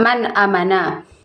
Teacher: menjelaskan atau menerangkan bacaan Selain itu izhar artinya juga berkaitan dengan melafalkan huruf-huruf izhar tanpa disertai dengan dengung